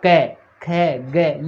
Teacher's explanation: बोल के देख लो, क ख ग, ये बोलेंगे तो अपने कंठ से ध्वनि निकलेगी। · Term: कंठे ध्वनियाँ